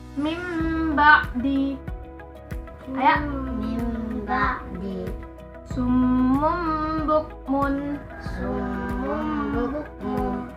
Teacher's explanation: bunyi nun mati dan tanwin menjadi Bunyi mim